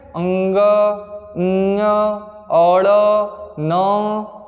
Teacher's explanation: जिनको बोलने के लिए मुख और नाक का प्रयोग किया जाता है, वायु मुख और नाक दोनों से बाहर निकलती है, उसको हम लोग कहते हैं अनुनासिक। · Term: अनुनासिक व्यंजन